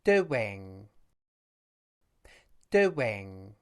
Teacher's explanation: If you say the word doing, you'll notice that it has 2 syllables with a w sound between them. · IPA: /w/